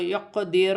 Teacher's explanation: قاف ساکن ہے، قلقلہ میں سے ہے، قلقلہ پیدا ہو، یقدیر، اور را موٹی پڑی جائے گی، اور یا ساکن سے پہلے زبر ہے تو یالن بنے گی، اور اسے کھینچا نہیں جائے گا۔